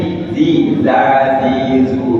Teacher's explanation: Ini kalau lidahnya kita gigit, kita keluarkan dia, maka itulah makhraj zal